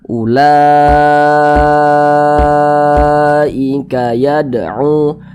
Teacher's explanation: Mad wajib muttasil itu panjangnya 5 harokat, 4 hingga 5 harokat. Nah, boleh 4 harokat atau kira-kira 4 ketukan.